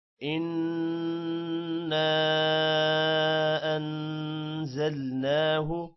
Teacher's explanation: نون پر غنہ ہے جبکہ الف پر مد ہے، اور انزلناہ کے نون پر بھی غنہ ہے